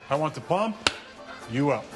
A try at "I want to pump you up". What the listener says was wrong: We want to pump you up like that. You put the emphasis on the wrong syllable.